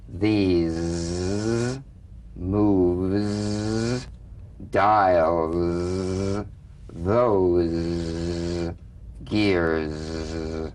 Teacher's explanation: So feel a smooth, strong vibration in the teeth and in the front of the tongue. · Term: Z sound